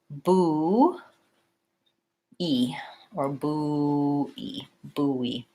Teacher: And there's kind of a little hidden W in between buoy.